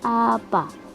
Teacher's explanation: vokal A rendah bawah depan